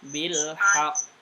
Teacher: Huruf qalqalah kalau berhenti dan di atas ditahan dulu baru mantul.